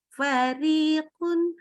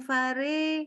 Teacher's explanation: Ri itu harus benar-benar i ya, jangan agak i dengan e. Fariqun, bukan fare.